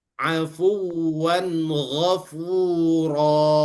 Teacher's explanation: Karena tanwin itu berada di akhir ayat, kemudian diganti dengan mat yang dipanjangkan. Ini namanya mat iwad.